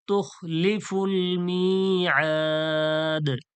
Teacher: হরুফে মাদ্দার পরে যখন সাকিন করার ক্ষেত্রে কি হয়, সাকিন হয়ে যায়, ওয়াকফ করার ক্ষেত্রে সাকিন হয়ে যায়, তখন কি হয়ে যায়, মাদ্দে আরিজ হয়ে যায়, ৩ আলিফ টেনে ছাড়তে হয়